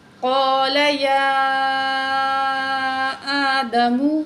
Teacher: قال یا آدم، یا کھڑی زبر مد، یا آدم، یا کو پر کھڑی زبر بھی ہے اور مد بھی ہے، آگے پھر الف حمزہ ہے، اس کو پر کھڑی زبر ہے تو ہم کھینچ کے پڑھیں گے۔ یہاں یا کو 5 الف کے برابر اور الف کو 1 الف کے برابر